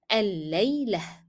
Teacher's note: Even if it was carrying a mark and I'm stopping on the word, I just pronounced the word and then I stopped, then I will drop the mark and I will drop the pronunciation of t of the ta marbuta and replace it with h. So the word will be pronounced like الليلة.